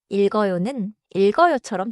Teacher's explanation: keep the 리을 before and link 기역 forward. · 리을기역 겹받침에서는 기역이 다음 음절로 이어져요.